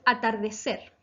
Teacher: atardecer, que se acentúa en la sílaba ser, por lo tanto es aguda.